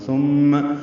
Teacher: میم مشدد پہ غنہ ہوگا